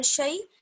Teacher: آگے ہے شیء، شین یا زبر شی، یا لین ہے یہاں پر کیونکہ یا پر جو ہے وہ جزم ہے اور اس سے پہلے شین پر زبر ہے، تو اس کو ہمیں کھینچنا نہیں ہے